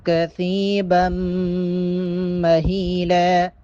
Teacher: با کو جب میم کے ساتھ ملائیں گے یہاں پر غنہ کریں گے